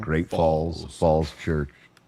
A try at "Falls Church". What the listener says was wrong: you might have said a little fast. You might have said some false church there.